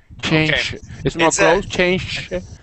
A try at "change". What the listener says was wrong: You're almost there. You're pronouncing more of an SH sound.